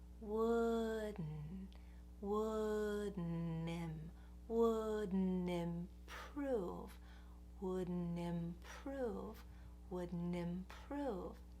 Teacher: What it means to shift from the D into the N is that you go up for the D, and then right after that, you send the air through your nose.